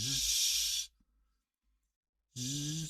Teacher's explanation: Y la segunda que interviene aquí es el otro sonido, zzz, un sonido muy vibrado, con mucha vibración. Es un sonido fricative porque tiene la turbulencia